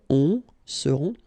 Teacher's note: Ils seront, final T not pronounced, and then you've got this nasal